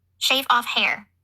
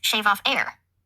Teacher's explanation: in fact she H dropped a lot shave off hair was shave off air no matter how her